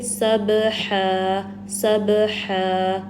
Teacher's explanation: اگلا لیٹر ہا ہے، درمیانے حلق کے حصے سے ادا ہوتا ہے اور دو زبر کو ہم الف مدہ میں چینج کر دیں گے.